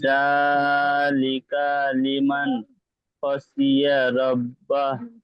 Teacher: এখানে নুন সাকিনের পরে খ এসে তাই ইজহার।